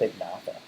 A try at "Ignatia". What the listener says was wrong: Ignata, there's an I in it. Like like it's almost like igneous rock, Ignatia. It's like igniting, Ignatia.